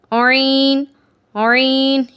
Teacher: عین کے وقت سٹارٹنگ میں وہ سکویز ہوگی، تھوڑا سا اس کے اندر نچوڑ پیدا ہوگا